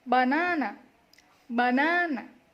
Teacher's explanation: We give a little press to the second syllable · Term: stress